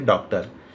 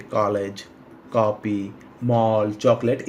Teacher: अंग्रेजी के कुछ शब्द ऐसे हैं जिनका उच्चारण आ और ओ ध्वनि के बीच होता है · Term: अर्धचंद्राकार